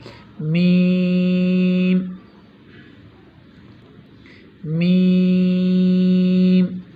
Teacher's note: با کی ادائیگی دونوں ہونٹوں کے اندر والے حصے سے جو منہ کی طرف ہوتے ہیں، اور میم میں دونوں ہونٹوں کے وہ حصے جو باہر کی طرف ہوتے ہیں ان کے آپس میں ملنے سے میم کی آواز پیدا ہوتی ہے